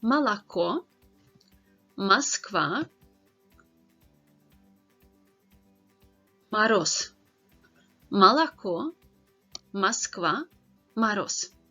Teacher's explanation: So whenever the O is stressed, then it is actually pronounced as O. Letter O is not stressed, then it is pronounced as A sound